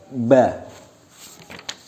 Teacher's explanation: Makharijul hurufnya bertempat pada kedua bibir atas bawah.